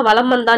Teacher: மகர மெய் எழுத்தை அடுத்து வகர எழுத்து வருவதால் மகர மெய்யானது தனக்குரிய அரை மாத்திரை அளவிலிருந்து குறைந்து கால் மாத்திரை அளவில் ஒலிக்கிறது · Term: மகர குறுக்கம்